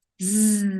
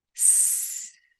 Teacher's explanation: vous pouvez ressentir la vibration pour le son z. En produisant le son s, on ne ressent aucune vibration.